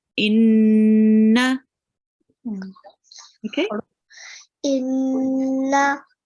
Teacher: When there is a noon or a meme carrying a shadda, we make a nasal sound and we prolong it, okay? So when I join the alif onto the noon, I stay on it for a bit.